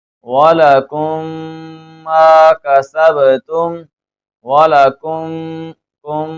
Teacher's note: یہ جو میں غنہ کر رہا ہوں اس لیے کر رہا ہوں کیونکہ یہاں پر بھی ادغام شفوی ہو رہا ہے